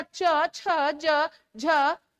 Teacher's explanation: आप लोग अपनी जीवा से तालू को ऊपर को छू रहे हैं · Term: तालव्य